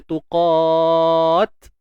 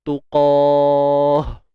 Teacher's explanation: bila kita matikan ta yang tertutup ni, kita kena matikan dengan bunyi ha. Tuqah.